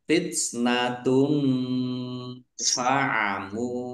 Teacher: Domah tanwin bertemu dengan huruf fa, bacaan ikhfa, dibaca samar-samar. Mim domah wawu sukun mat tobi'i panjang 2 harokat.